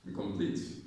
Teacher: The stress is on complete.